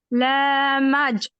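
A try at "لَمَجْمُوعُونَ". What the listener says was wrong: कोशिश करनी है, ला को खींचना नहीं है, ठीक है?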